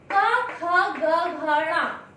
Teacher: इन शब्द का उच्चारण करते समय हमारे कंठ से वायु टकराते हुए बाहर आती है